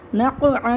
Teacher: اس کو حلق سے نکال کے پڑھنا ہے، حلق کو بند کر کے پھر کھولیں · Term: عین